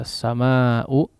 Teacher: As-samaa'u di sini adalah mad wajib ya, mad wajib muttasil, kadarnya 4 atau 5 harakat ya